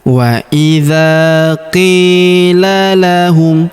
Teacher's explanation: Huruf qi kita panjangkan dua harakat karena terdapat ya sukun di depannya.